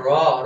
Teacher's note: র উচ্চারণ সময় জীবাটা একটু কি কম্পিত হচ্ছে। এটা হচ্ছে র তারিত ব্যঞ্জন মানে কম্পনের চেয়ে একটু বেশি কাপাকাপি তাই না? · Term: কম্পিত ব্যঞ্জন